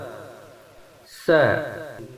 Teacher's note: Lalu huruf sin di sini kita bahas makharijul hurufnya. Sin makharijul hurufnya berada pada ujung lisan yang disentuhkan pada ujung gigi seri yang bawah.